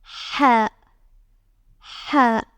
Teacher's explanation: It is a throaty sound. Take care. It is totally different from the regular H sound for the letter H. We can say it is like a breathy H, so it is ha.